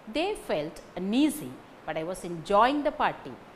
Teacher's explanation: Un is not carrying stress, easy carries stress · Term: word stress